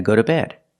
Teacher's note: the t is a fast D